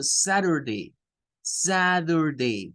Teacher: Entonces ahí la T está en medio de la A y está en medio de la U. El fenómeno de la flap T hace que la letra T, algunos estadounidenses la pronuncien como una especie de D y otros estadounidenses la pronuncian como una especie de R.